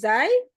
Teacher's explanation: Ujung lidah bertemu dengan gigi seri bagian bawah. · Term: huruf zai